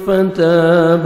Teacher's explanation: تا کو باریک پڑھنا ہے 1 سیکنڈ کھینچنا ہے